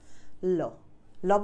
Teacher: ল বললে 2 পাশ দিয়ে জাস্ট হাওয়া বের হচ্ছে, ল এই 2 পাশ দিয়ে হাওয়া বের হয় বলেই লকে পার্শ্বিক ব্যঞ্জন বলে।